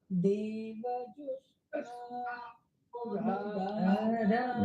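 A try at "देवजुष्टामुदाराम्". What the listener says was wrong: Better, correct.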